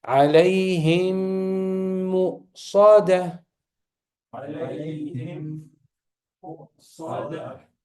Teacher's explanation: Hamza will always be Hamza. And the meme and the meme, when they combine, they become long.